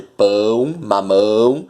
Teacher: então além do pão ser um ditongo decrescente ele também é nasal